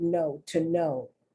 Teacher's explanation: here the diphthong OW sounds like O, like the long O sound